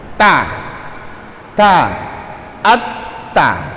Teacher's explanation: lidah kita berada di gusi atas, di belakang gigi gusi atas